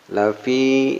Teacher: Lafi ini mad tabi'i panjang dua harakat.